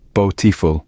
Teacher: in the word beautiful, the first syllable is stressed.